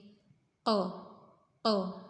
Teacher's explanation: berarti dia termasuk huruf yang memiliki sifat isti'la. Pangkal lidah naik. · Makhraj huruf qaf yaitu pangkal lidah dengan langit-langitnya.